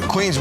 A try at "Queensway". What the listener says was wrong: No, Queensway, like W-A-Y. No, Queensway, W-A-Y. Queensway Bridge. Queensway. yeah, like Sherman Way.